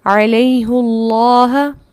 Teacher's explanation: یا ساکن موجود ہے، اس کے باوجود ہا پر پیش ہے، کسرہ نہیں ہے